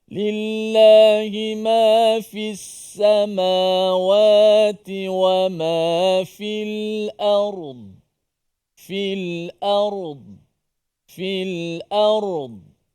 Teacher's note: Yang huruf dad ini walaupun dimati tidak boleh kita qalqalahkan huruf dad